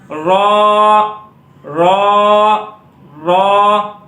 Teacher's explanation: زبان کا سیرا کنارہ اور اوپر کے تالو سے، را را را، ہونٹوں کو گول نہیں کرنا، رو اس طرح نہیں پڑھنا، را را را، اوپر کے مقابل کے تالو سے لگانا ہے اس کو، را را را۔